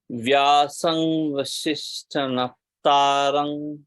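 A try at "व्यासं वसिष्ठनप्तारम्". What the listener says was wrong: So are you saying nga here? Vyasam or vyasam? Va. Vyasam vasishtha va. So only take that word. Naptaram. Pa and ta. Naptaram.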